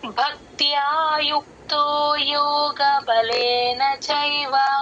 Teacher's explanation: భక్త్య భ కి మహాప్రాణం క కింద త వత్తు య వత్తు రెండు వినిపించాలి . భక్త్య బ తర్వాత క కి పొల్లు పెట్టుకోండి భక్త్య త కింద